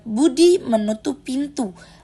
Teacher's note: Bunyi B pada budi diucapkan dengan menutup kedua bibir lalu melepaskannya secara letup. Sedangkan bunyi T pada pintu dihasilkan dengan menempelkan ujung lidah ke gusi atas lalu melepaskannya perlahan. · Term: fonem konsonan